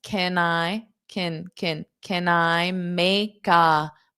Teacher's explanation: this K is going to transfer onto the next sound. So I can say these two words without pausing.